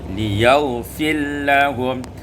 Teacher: Pada ayat 168 liyaghfira lahum, idghamur ra fil lam, dibaca diidghamkan ra pada lam menjadi liyaghfir lahum